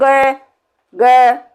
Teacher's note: जब हम गय का उच्चारण करते हैं, गय, ग, कोई वायु ही बाहर नहीं निकलती। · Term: अल्प प्राण